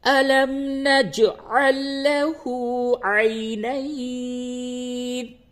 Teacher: یہ جیم پہ قلقلہ ہوگا ہر حالت میں کیونکہ ساکن ہے